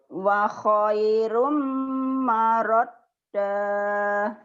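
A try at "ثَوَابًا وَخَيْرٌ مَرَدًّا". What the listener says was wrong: Dah, jangan dah. Sawabau wa khairum maradda. Coba lagi.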